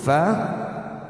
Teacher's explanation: Kullu huruf fa, gigi atas dengan bibir bawah, ujung gigi atas dengan bibir bawah, ada anginnya, dialirkan angin itu satu harakat juga